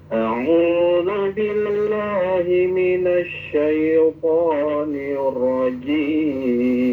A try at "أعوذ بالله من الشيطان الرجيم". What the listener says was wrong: Nah, kalau misalkan mau lagu ya suaranya jangan diputus, jangan putus itu. A'udzu billahi minasy syaithanir rajim. Jadi suaranya harus tembal. Harus jangan tinggi terus rendah gitu terus. Yang standby.